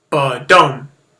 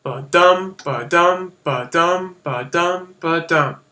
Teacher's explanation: light stress followed by a heavy stress. You could think of it like this, like the beat of a heart. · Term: iambic foot